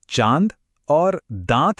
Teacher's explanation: यह एक ऐसी आवाज है जिसमें हवा सिर्फ नाक से नहीं बल्कि मुंह और नाक दोनों से एक साथ बाहर निकलती है। यह जो हल्की और ज्यादा खुली हुई नासिक की आवाज है, उसे आप चांद और दांत जैसे शब्दों में महसूस कर सकते हैं। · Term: चंद्रबिंदु